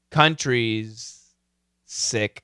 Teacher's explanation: this is a z countries sick this is an S so the Z and the S are similar sounds